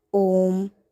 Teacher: ओ के बाद ओ 3 मात्रा के बराबर बोला जाएगा। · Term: प्लुत स्वर